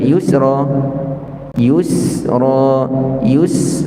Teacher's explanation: juga beri tempoh sebelum nak sebut Ra jangan Yusra Yus Yus beri tempoh sekejap pada Sin tanpa kita angkat lidah kita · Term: rakhawah